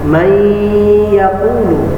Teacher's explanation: Jadi nun mati bertemu dengan ya, didengungkan. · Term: idgham bi gunnah